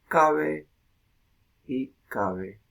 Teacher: lo que eran dos fonemas en el castellano medieval, ahora se fusionan en uno solo, con dos holófonos, uno oclusivo, otro fricativo.